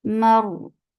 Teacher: Keep meme light, but ra will be heavy because there is fatha before it.